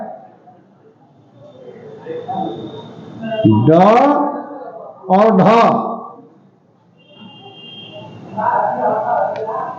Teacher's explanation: ऐसे व्यंजन वर्ण जिनके उच्चारण में जिह्वा की नोक झटके से नीचे आती है, जिह्वा के इस क्रिया को उच्छिष्ट कहा जाता है।